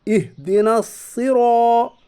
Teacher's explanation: यहाँ इहदिना नहीं पढ़ा जाएगा बल्कि नून सीधा स्वाद के साथ मिलेगा, यहाँ इदगाम शमसी होगा। रा मुतहरिक के ऊपर ज़बर है इसलिए रा मुतहरिक पुर पढ़ी जाएगी। अलिफ से पहले पुर हरफ है।